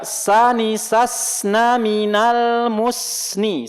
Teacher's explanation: jadi jangan dipantulkan tapi dialirkan. Nah, itu namanya sifatnya rokhwah kalau mengalir, ya, mengalirnya suara.